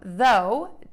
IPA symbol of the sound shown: ðoʊ